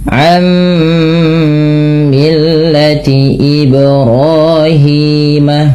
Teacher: tidak lagi dibaca an millati, tapi langsung ke mim dan ditahan suara mimnya karena ia bacaan idgham bi gunnah.